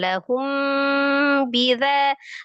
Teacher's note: Lahum bi mim sukun ketemu dengan huruf ba dibaca ikhfa safawi. Dia gunnahkan lahum bidza, dzanya ma dibaca 2 harakat.